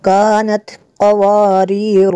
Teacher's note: قاف کو پر کریں گے، حروف مستعلیہ میں سے ہے۔